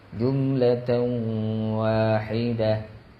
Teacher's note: Jadi ta marbutah tu, ta gulung tu bagi dua di atas bertemu dengan waw. Tanwin bertemu dengan waw idgham ma'al gunnah. Maka kita baca dengan dengung qadar 2 harakat. · Jadi wahidatan tu kalau kita berhentikan, dia akan bunyi wahidah.